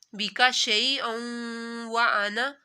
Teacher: ہوگا۔ حروف اخفا میں وو بھی آتا ہے، تو یہاں پر دو زبر کے بعد وو آ رہا ہے تو یہاں پر ناک میں آواز لے کے جانی ہے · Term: غنہ